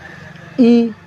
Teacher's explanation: زیر ہے، آواز کو نیچے گرا کر ادا ہوتا ہے